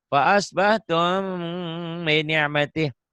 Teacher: Kadang-kadang karena bibir atas, bibir bawah rapat kayak ada getaran gitu. Geli di bibirnya. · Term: Ikhfa syafawi